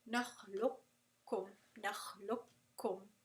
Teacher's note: You're not going to pronounce the qaf at all. · You're not going to pronounce the qaf with the qalqala. You're not really going to pronounce the makhraj of the qaf. You're going to drop it and you're going to do idgham kamil, just like in Mutajaanisaan.